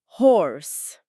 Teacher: E o segredo aí está no controle da respiração. O H inicial de horse, ele é uma expiração limpa. É um soprinho. Você não deve raspar a garganta. E o meio da palavra tem que ser um or bem redondinho.